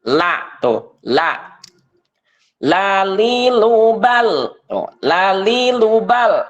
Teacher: lisan ataupun pinggir lidah tapi ketika praktiknya kita merasakan seakan-akan lidah seakan-akan makhraj lam itu berada di ujung lidah · dia termasuk makhraj hafatul lisan pinggir lidah ya dalam kaidah tajwidnya lam itu termasuk ke dalam makhraj hafatul lisan ataupun pinggir lidah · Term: huruf lam